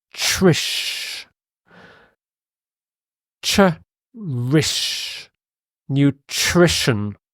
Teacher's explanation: It's got 3 syllables, new, just sounds like the adjective new, and this middle is trish. Trish. It almost sounds like the ch sound.